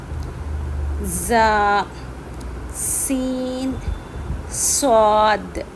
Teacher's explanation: یہ جو تین حروف ہیں اس کو دونوں دانتوں کے درمیان سے پڑھیں گے